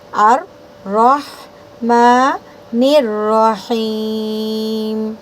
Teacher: را کو موٹی کریں گے اور را کو ہا میں ملاتے ہوئے جھٹکا نہیں دینا ہے